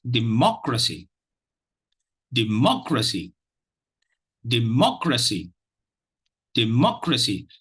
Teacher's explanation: there is only one stress syllable, and that is the 2nd syllable, because the other 2 are not CVC syllables and they contain E, D, and R.